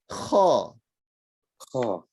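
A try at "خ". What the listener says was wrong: So don't say kha because that's like a Q, right? Kaf. That's not the one.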